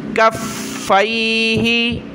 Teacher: یا زبر کف، فا یا زبر فی، کفی ہا زیر ہی، فا کو سخت کریں تشدید کی وجہ سے